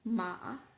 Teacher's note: falling rising tone imagine the tone of your voice when you say the word meow